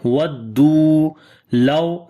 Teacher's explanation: Waw is madda here. Waw is coming with sukun sign, and before there is dhamma. So this waw is waw madda. We long two counts here.